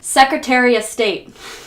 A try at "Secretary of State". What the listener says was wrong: Well, I believe that's the Secretary of State, but somehow you took 3 words and mashed them even closer. The Secretariuh State. You just don't pronounce everything. It's the Secretary of State.